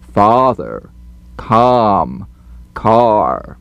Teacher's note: the largest stretch opening is called number five ah as in father · The lip opening is too small. We need to pronounce our number 5 vowels with much larger openings for a big round ah sound.